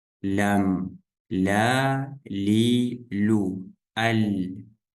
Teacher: кончик языка и его ближние края вместе с началом твёрдого нёба